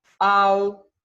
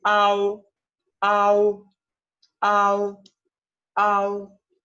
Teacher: En esta final, la A debe pronunciarse de manera más larga y enfática que la O. ¿Sí? La A aquí tiene mucho más peso en la pronunciación. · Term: final AO